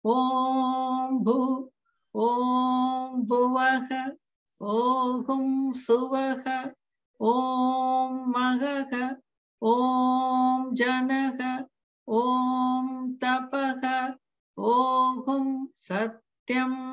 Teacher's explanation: everything is the same middle swara, except for at the very end, the sat in satyam goes down